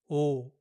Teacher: It's a single pure sound. When Koreans say this letter, they only pronounce the first part of the English O, not the final oo part that comes after O.